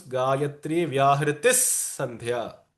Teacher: So the Sandhi rules say that when the Visarga is followed by a Sa, it will mimic the Vyanjana Sa.